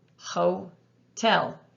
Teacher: the first vowel is long because it's an open syllable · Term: long O